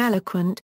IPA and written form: ˈɛləkʰwənt (eloquent)